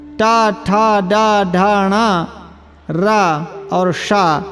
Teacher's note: री टू अर्थात टवर्ग, टा ठा डा ढाणा रा और शा ये मूर्धन्य वर्ण हैं, इनका उच्चारण स्थान मूर्धा है